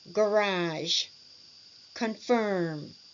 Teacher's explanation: Stress on the second syllable, and the voice still falls a little at the end.